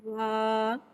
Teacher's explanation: الف سے پہلے زبر آ رہا ہے، الف مدہ ہو رہا ہے، لہذا الف مدہ کو ایک الف یعنی 2 حرکات کے برابر کھینچ کے پڑھیں گے، اور واو کو ہونٹوں کی گلائی کے ساتھ ادا کر کے پڑھیں گے، واو، الف زبر وا۔